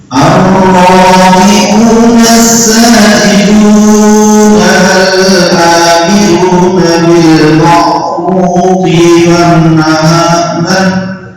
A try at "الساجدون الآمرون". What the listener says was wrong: As-sajidunal jangan as-sajidunal kepanjangan. Mulai ar-raki'un as-sajidun al-amirun.